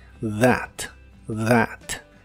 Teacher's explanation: la th de esta palabra se pronuncia como la d vibrante